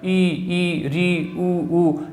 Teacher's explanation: ऐसे स्वरों का उच्चारण करते हैं कि मुख द्वार बंद सा रहता है, यानी बहुत कम खुलता है। तो संवरित स्वर में क्या है कि मुख द्वार बंद, यानी बहुत कम खुलता है, बहुत कम खुलता है।